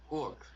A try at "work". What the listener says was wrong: Work, not walk. Okay, it's work.